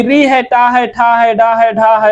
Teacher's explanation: ये सभी के सभी मूर्धा से बोले जाते हैं